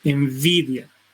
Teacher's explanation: interviene el labio inferior y los incisivos superiores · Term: labio dental